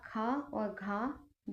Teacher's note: जिनका उच्चारण करते समय मुख से अधिक हवा निकलती है। वे व्यंजन महाप्राण कहलाते हैं। इनकी संख्या प्रत्येक वर्ग का दूसरा तथा चौथा व्यंजन तथा ऊष्म वर्ण महाप्राण होते हैं।